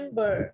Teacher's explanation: xuyên ngập đó là dấu trọng âm đúng không lấy thì mình sẽ nhấn mạnh một cái âm đầu tiên